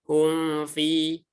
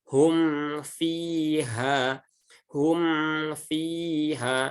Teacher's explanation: Yang benar, rapatkan dulu mimnya dengan sempurna, baru ucapkan fa-nya. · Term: izhar syafawi